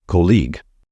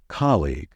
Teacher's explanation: and say colleague however the stressed syllable in this word is the first one so it should be pronounced as colleague